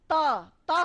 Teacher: त हम बोलते हैं तो हमारी जीभ हमारे दांतों तक आती है